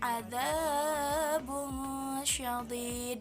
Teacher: dia samar antara dengung dengan huruf syah. Jadi dia samar-samar gitu. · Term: ikhfa